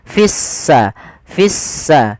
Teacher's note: langsung diidghamkan ke huruf sin, sehingga sinnya berharokat tasdid, seakan-akan s-nya dua